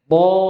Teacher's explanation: Diangkat. Pangkal lidahnya naik. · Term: huruf isti'la